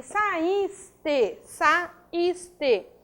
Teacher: a sílaba tônica é o is, é uma paroxítona